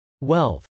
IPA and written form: wˈɛlθ (wealth)